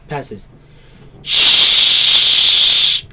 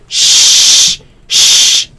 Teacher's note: there's a very tight, very narrow space through which this sound passes. Shh. If you realize that the tongue is suspended here, and the sound is pushed out from this narrow space.